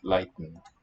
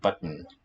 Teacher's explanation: the t not really released at the tongue tip more of a glottal stop for me in my speech